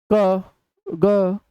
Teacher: बहुत कम प्राणवायु खर्च होती है तो इसीलिए हम इसे अल्पप्राण का नाम देते हैं